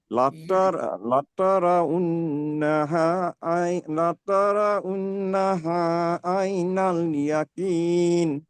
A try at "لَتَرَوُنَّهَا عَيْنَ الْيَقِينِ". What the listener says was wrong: یقین میں قاف نکالنا ہے. ثم لترونها عین الیقین.